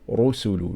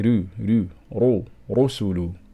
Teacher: Okay, so if we look at this example, the word rusulu, we can see dhamma is clearly written on the ra. So here we're going to pronounce the ra strong. Rusulu. We're not going to say ru, rusulu. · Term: Tafkheem